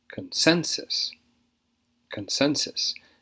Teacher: stresses on the second syllable